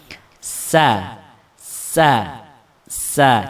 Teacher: Nah, harus ada suara sofirnya, ya, suara kayak suara siulan yang kecil, tapi jangan sampai berbentuk suara siul, ya, hanya kayak mirip suara apa namanya, desis nafas yang keluar di awal gitu saja